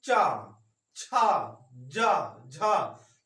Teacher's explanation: तो मतलब पूरी आवाज हमारे तालु से टकराकर निकलेगी। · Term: तालव्य वर्ण